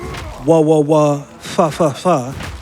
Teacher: the Maori F sound is in the same mouth shape as the letter W